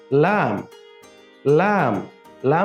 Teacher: লাম হরফ উচ্চারণের সময় আমাদের জিহবার মধ্যখান উপরের তালের সাথে লাগবে